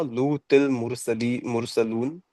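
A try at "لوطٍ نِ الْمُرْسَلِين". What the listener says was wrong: लूतिन नील मुरसलीन ना मेरे भाई, लूतिल नहीं पढ़ेंगे, लूतिन नील मुरसलीन।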